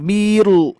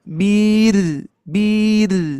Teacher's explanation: ditipiskan ya karena sebelum e Mad itu kasrah ya maka rnya jadi tipis